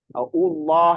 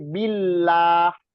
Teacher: Jadi kalau yang domah dengan yang fathah ketemu kata Allah itu dibaca tafkhim atau tebal. Tapi kalau dia dari kasroh itu dibaca tarkik. Tarkik itu tipis.